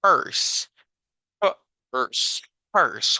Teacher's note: en realidad aquí en medio lo que tenemos es el sonido del schwa, que el schwa es solo un golpe de aire